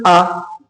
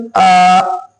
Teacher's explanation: کھڑے زبر کو تھوڑا کھینچ کر پڑھیں گے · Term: کھڑا زبر